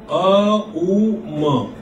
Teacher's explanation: it starts effortless from the throat and then ends in Ma, in between U modification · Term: Pranava